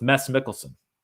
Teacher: Mads Mikkelsen's name is pronounced with a silent D, like mess